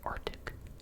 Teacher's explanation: If you really listen, you can maybe kind of hear it, Arctic, as a bit of a pause in the back of your throat, but you're not pronouncing the C